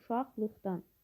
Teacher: Demək, uşaqlıqdan sözündə 2 dəyişim var. Q samitləri X samitlərinə çevrilir.